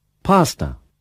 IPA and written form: ˈpæstə (pasta)